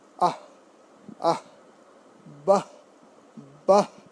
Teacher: অবশ্যই অব্যয়ের শেষে বিসর্গ থাকলে অর্ধ হ হয় বা অর্ধ হয়ের মতো উচ্চারণ হয়